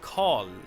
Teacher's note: R and L usually in Swedish get merged into a retroflex consonant that sounds like Karl. So the tongue the tip of your tongue flexes and you get one sound.